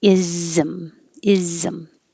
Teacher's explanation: anytime you have ISM at the end of the word ISM it's going to have an invisible vowel between the S and the M it's going to sound like is Zim like a z is